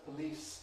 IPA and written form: pəˈliːs (police)